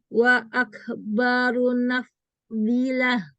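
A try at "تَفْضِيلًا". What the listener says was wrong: Ini ta. Nggak boleh lah, nggak ada tak marbufah.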